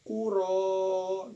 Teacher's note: Nah, di sini ada hukum bacaan mad tabi'i. Sebab adanya fathah berdiri di atas huruf ro, maka dipanjangkan 2 harokat.